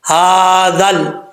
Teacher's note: لام ساکن ہو تو اس کو کلکلے سے بچانا ہے · ذال کا مخرج زبان کا سرا اوپر والے دانتوں کے کنارے سے لگے, اندرونی کنارے سے, تو ذال پڑھا جاتا ہے, ذال بغیر سیٹی کے.